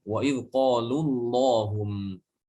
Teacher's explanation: Wa idh qalu, di situ ada huruf mad. Maka huruf madnya dihilangkan.